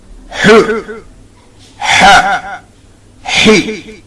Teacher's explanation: Ha is from the middle of the throat.